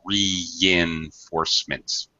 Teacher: between the E and the I here, there's a Y sound. And that's called a glide. In English, we divide two vowel sounds with a glide, a Y or a W sound, always, so that there's a consonant in between the two vowels.